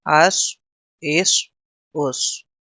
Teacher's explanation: حمزہ صاد زبر اس، حمزہ صاد زیر اس، حمزہ صاد پیش اس میں بھی سیٹی کی آواز، لیکن اس کو پر کر دیں گے